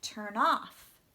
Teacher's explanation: the stress should be on off